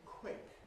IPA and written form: kw̥ɪk (quick)